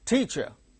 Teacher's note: first syllable gains stress